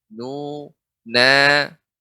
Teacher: Maka ketika membaca nu memang ada keluar dari rongga bukan rongga hidung keluarnya, tapi rongga mulut kita nu ya. Maka ketika setiap kita mendapatkan yang dhammah dimonyongkan nu, bukan ditutup, atau kita kurang ya malas mengucapkannya dengan dimonyongkan ataupun lebih dengan hidung nu.